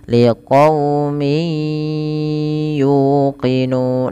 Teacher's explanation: Awalnya kan min gitu ya, bertemu ya, suara nunnya itu diganti dengan waw, maka liqaumi, diganti dengan ya, maka liqaumi, langsung ke ya dan ditahan suara ya-nya 2 harakat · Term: idgham bi gunnah